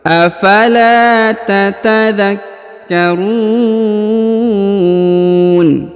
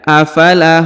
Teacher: Afala, huruf la dipanjangkan 2 harokat karena di depannya terdapat alif.